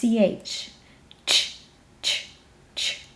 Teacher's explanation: you have a little bit of transients at the beginning followed by this turbulence so let's look at some graphs we have to the left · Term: affricate, affricate combination